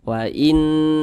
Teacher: Ini hukumnya adalah gunnah musyaddadah. Dibaca dengung 2 hingga 3 harokat.